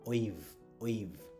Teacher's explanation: দেখেন ওয়া এই ভা, ওয়েভ, ভা সাউন্ডটা কি, উপরের দাঁত নিচের ঠোঁট, তাই না, ওয়েভ, ওয়েভ।